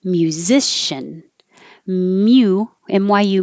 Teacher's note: you start your tongue very high in a y position